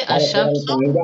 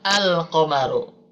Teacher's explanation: kalau dalam syamsiah, lamnya tidak dibaca, hilang, karena bertemu huruf syamsiah. Sedangkan ketika bertemu huruf komariah, suara al, lamnya muncul kembali. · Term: idgham syamsiah